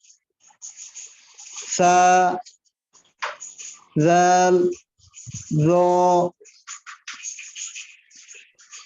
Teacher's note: তারপর 13 নম্বর মাখরাজ জিহ্বার আগা সামনের উপরের দাঁতের আগার সাথে লাগিয়ে